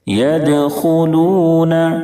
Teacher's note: خا کو مکمل پر پڑھیں کیونکہ خا حروف مستعلیہ کے ساتھ حرفوں میں سے ہے. خا کی ادائیگی میں حلق سے کھڑکھڑاہٹ کی آواز نہ نکلے